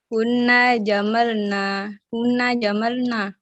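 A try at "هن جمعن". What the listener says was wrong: Nggak ada lam di situ jamaah. Jangan ambil kini karena memang ada lamnya di sini karena fa'ala. Di sini jamaah nggak ada lam. Jadi yang harakatnya saja diambil. Jadi hunna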